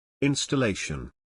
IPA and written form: ˌɪn.stəˈleɪ.ʃən (Installation)